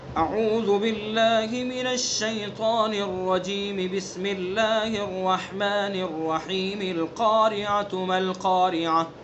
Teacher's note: یہ بالکل اس کا اپوزٹ ہے. یہاں الرجیم کو بسم اللہ سے ملائیں گے اور بسم اللہ کو سورت سے ملا کر کے پڑھیں گے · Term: وصل کل